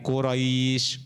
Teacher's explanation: Nah bunyinya I enggak boleh e. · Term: bacaan layinah